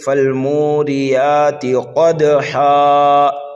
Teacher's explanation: جب ہم ہا پر وقف کر دیں گے تو یہاں پر وقف بالابدال ہوگا، ٹھیک ہے، 2 زبر کو الف سے بدل دیں گے۔ · قاف کو دال میں ملائیں گے اور یہاں پر جو ہے قلقلہ صغیرہ کریں گے، اس لیے کہ دال جو ہے حروف قلقلہ میں سے ہے۔